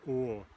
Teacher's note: like if you say ah at the dentist's office but with your lips rounded